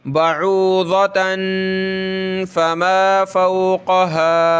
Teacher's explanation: اس میم پہ جو ہے تشدید ہے، یہ ناک میں آواز پیدا کرنی ہے اور میم آگے لام کے ساتھ ملے گی.